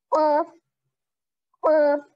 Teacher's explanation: जैसे मैंने आपको कहा था कि जुबान के भी 4 हिस्से होते हैं, इसी तरह अक्साउल लिसान, जिसे हम जुबान की जड़ कहेंगे या फिर जुबान का आखिरी हिस्सा कहेंगे, उससे, उस हिस्से से ये क़ाफ अदा होगा